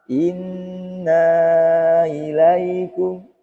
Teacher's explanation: Jadi hamzah itu harus jelas karena dia mempunyai sifat jahar